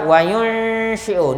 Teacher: nun sakinah bertemu dengan shin, dibaca dengan kadar dengung sebanyak dua harakat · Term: ikhfa hakiki